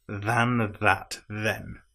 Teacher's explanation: in this case, all three of the th's are voiced